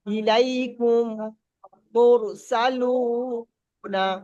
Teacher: মিম সাকিনের পরে দ্বিতীয় মিম আসলে প্রথম মিমটাকে দ্বিতীয় মিমের সঙ্গে মিলিয়ে গুণনা করে পড়তে হবে।